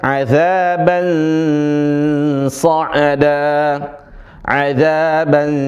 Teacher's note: Sebagian teman-teman baca adzaban shada bang kayak bang abang adzaban sh bukan bang tapi adzaban sh ya suara n yang samar dan suara ada suara ns an bukan an itu n yang jelas tapi yang samar an az an n yang tidak jelas atau yang samar suara nun nun yang samar atau yang disebut dengan ikhfa ya kemudian setelahnya ada huruf shad maka dia ada s-nya sedikit atau sifat dari shad an s'ada an'ada tibb ahsantum Barakallahu fikum.